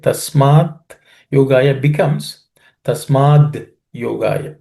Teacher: In the next line, tasmat yogaya. The it in the first word becomes id. So id plus ya becomes dya.